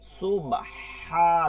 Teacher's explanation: সুবহা, লম্বা হা, হলকের মধ্যখান।